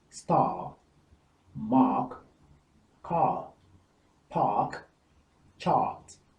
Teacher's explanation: the R is not pronounced in British English in this case. So it is star, not star, as it would be in the American English.